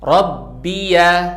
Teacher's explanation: di kata Rabbiya, baknya bertasydid. Jadi pastikan kalian tekan suaranya.